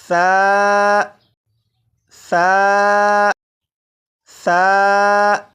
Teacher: इस तरह पढूंगा कि इसे नरमी से पढूंगा यानी सीटी की आवाज के बगैर पढूंगा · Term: नरमी से पढ़ना